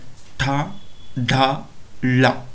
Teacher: ನಾಲಿಗೆಯನ್ನ ಹಿಂಭಾಗಕ್ಕೆ ಮಡಚಿ ಮೇಲ್ಭಾಗದ ದವಡೆಯನ್ನ ಟಚ್ ಮಾಡುವುದರ ಮೂಲಕ ಈ ಅಕ್ಷರಗಳನ್ನು ಉಚ್ಚಾರಣೆ ಮಾಡ್ತೀವಿ ಅವು ಯಾವುವು ಅಂತ ನೋಡಿದ್ರೆ ಠ ಡ ಳ ನೋಡಿ ಈ ಅಕ್ಷರಗಳನ್ನು ಉಚ್ಚಾರಣೆ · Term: ತಾಲವ್ಯ